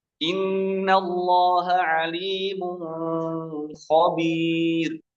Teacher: Karena kha bukan di tenggorokan itu makhrajnya, tapi masuk ke lidah. Masuk ke pangkal lidah.